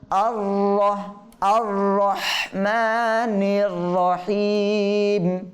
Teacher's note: দেখেন এখানে প্রথম র এর আগে আমরা হামজার মধ্যে জবর পড়ছি, তো জবর হলে এখানে র দুইটা আছে, এই র উভয়টা মোটা হবে, পুর করে পড়তে হবে। · দেখেন প্রথম র পাতলা, দ্বিতীয় র মোটা।